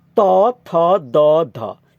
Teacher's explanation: दाँतको तपाईँको भागमा चाहिँ जिब्राले हिर्काउँछ र उच्चारण हुन्छ। त्यसैले यसलाई दन्त्य भनेको हो। · दन्त ध्वनि अन्तर्गत त, थ, द, ध पर्छन्। हेर्नु त, माथिल्लो दाँतको पछिल्लो भागमा जिब्राको टुप्पोले ठोकिएर उच्चारण हुने